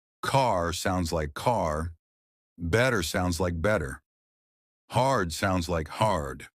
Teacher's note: Unlike British English, Americans stretch their R sounds. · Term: The secret R sound